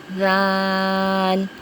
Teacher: ذال نرمی والے حروف میں سے ہے اور اس کی ادائیگی کا طریقہ یہ ہے کہ زبان کی نوک جب اوپر والے دو دانتوں کے کنارے سے لگے تو ذال ادا ہوتا ہے